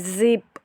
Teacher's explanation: जिप जब आप करेंगे ना तो आप देखेंगे कि यहाँ पे आपके वोकल कॉर्ड्स जो हैं वो वाइब्रेट कर रहे हैं